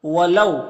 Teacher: یہاں پر واولین ہے تو اسے نرم آواز کے ساتھ جلد پڑھیں گے